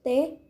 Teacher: konsonan apiko alveolar hambat tak bersuara